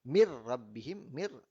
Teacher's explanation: nun mati bertemu dengan ra, itu adalah dibaca dengan kadar tidak ada dengung, tidak ada dengung, hanya memasukkan sahaja nun mati bertemu ra.